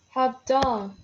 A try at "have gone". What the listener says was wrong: Have gone with a G.